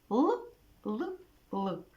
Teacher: при вимові звука л губи відкриті зуби злегка розкриті звужений кінчик язика упирається у верхній зубки голосові зв'язки вібрують при вимові звука л губи витягуються в сторони кінчик язика звужений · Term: звук л